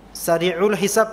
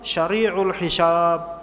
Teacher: Sya diganti atau sin diganti dengan sya